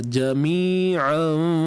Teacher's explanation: Kat sini tanwin jumpa fa. Sepastinya ikhfa hakiki. Dengung nipis sahaja.